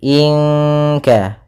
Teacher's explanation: Pada bacaan inka di sini ada ikhfa. Ya, nun mati bertemu dengan kaf yaitu ikhfa bagian yang paling belakang yaitu ikhfa ab'ad, dan kita menyamarkannya ke huruf kaf langsung